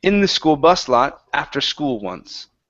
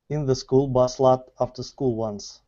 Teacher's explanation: So we're gonna come up on bus, down on lot.